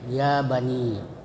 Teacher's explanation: Nah, ini disebut mad tabi'i, mad yang panjangnya biasa ya 2 harakat atau 1 alif